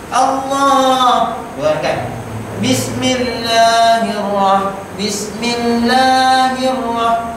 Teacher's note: lam dalam kalimat Allah itu panjang 2 harakat